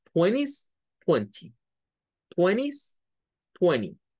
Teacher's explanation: Es por la regla esa de la NT, ¿verdad? De que cuando hay una N delante de la T no suena